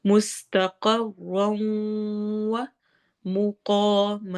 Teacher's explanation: سین میں سٹی والی آواز، قوف کو موٹا کرنا ہے، مستقر، را کو بھی موٹا پڑھنا ہے اور آگے واو سے ملا دینا ہے لمبا کرتے ہوئے